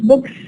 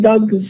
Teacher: We add the plural morpheme, and then according to the preceding sound, after adding this morpheme, if the preceding sound is voiceless, then we produce sa. If it is voiced, then we produce za.